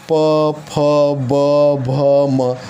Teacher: प फ ब भ म, इनका उच्चारण स्थान ओष्ठ होता है